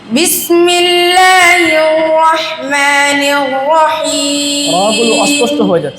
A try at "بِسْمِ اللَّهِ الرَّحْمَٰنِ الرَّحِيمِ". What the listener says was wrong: রাগুলো অস্পষ্ট হয়ে যাচ্ছে রাগুলো অস্পষ্ট হয়ে যাচ্ছে না হির রহমানির এরকম না হির রহমানির বিসমিল্লাহির রহমানির রহিম এত স্লো পড়ার দরকার নাই আরেকটু গতিময়তার সাথে পড়ো ঠিক আছে বিসমিল্লাহির রহমানির রহিম